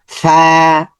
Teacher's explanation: ফা এর মাখরাজ হচ্ছে উপরের দাঁত নিচে ঠোট নিচে ঠোঁটের মধ্যে লাগবে ফা নরম সাউন্ড হবে খুব শক্ত হবে ভিতর থেকে বাতাস আসবে